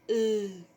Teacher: The phoneme L has alveolar articulation point, that is, the tongue comes into contact with the upper alveoli. It has a lateral articulation mode, that is, the R passes brushing the sides of the oral cavity.